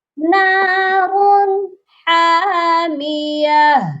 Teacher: ما ہِیَ نَارٌ حَامِیَةٌ، یہاں پر نارن کی جو تنوین ہے ادھر بھی صرف اظہار کرنا ہے، تنوین کو ظاہر کرنا ہے، غنہ بالکل نہیں ہونا چاہیے